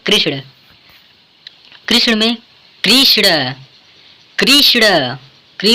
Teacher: कृष्ण में कृष्ण, कृष्ण, क्री पर बालाघात है, क्योंकि कृष्ण बोलने में क्री पर अधिक बल पड़ रहा है, इसलिए क्री वर्ण पर बालाघात होगा